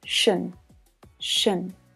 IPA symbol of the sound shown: ʃən